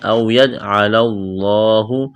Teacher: لفظ اللہ کے نام سے پہلے زبر موٹا کریں گے